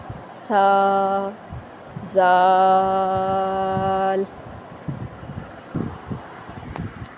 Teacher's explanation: اوپر اور نیچے والے دانتوں کے درمیان زبان کو پکڑ کر تھوڑا سا باہر نکالیں گے تو سا ادا ہو جائے گا۔ یہ یاد رکھیں کہ اس میں سیٹی کی آواز نہیں آنی چاہیے۔